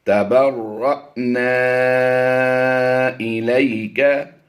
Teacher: را حمزہ ساکنہ پر ہم ہمیشہ جھٹکا دے کر پڑھتے ہیں